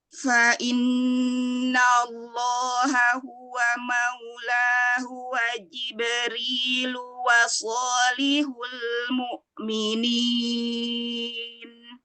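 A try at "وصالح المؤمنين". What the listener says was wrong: Shotnya angkat isti'lanya Umi. Wasolihu. Nah, ada sofirnya ya pada shotnya. Wasolihul mu'minin. Hamzahnya tabrak. Mu'minin.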